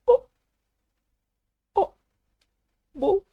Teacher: просто Произнесите букву у обычную русскую букву О а затем её очень-очень краткую версию О как будто бы вы слегка удивились